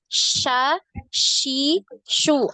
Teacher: Di tengah lidah. Sha, shi, shu. Ada penyebaran suara ya. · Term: shin